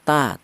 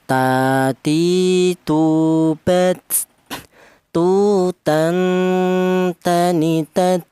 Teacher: Huruf ta itu ujung lidah menyentuh pangkal gigi seri atas